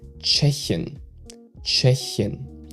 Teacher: you pronounce the ch at the start like a CH in cheese and not like a T with a SH after that